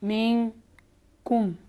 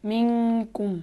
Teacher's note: का आगे मीन कुम, यहाँ भी इस तरीके से नून साकिन के बाद काफ आया है, तो नून को काफ के मखरज में छुपाएंगे